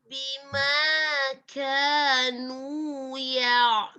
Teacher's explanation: tidak tebal seperti huruf qaf. Dia memiliki sifat al-hamas, mengalirnya udara. Mengalirnya udara pada saat mengucapkan huruf kaf. Jadi bukan mengalirnya suara.